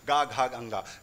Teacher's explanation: इन व्यंजनों को बोलने में कंपन हो रहा था गले में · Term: सघोष